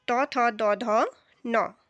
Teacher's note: तो हिंदी की दंत ध्वनियाँ यानी कि जिन्हें उच्चारित करते समय हमारी जो जीभ है वो किस में स्पर्श होती है, वो हमारे दांतों में स्पर्श होती है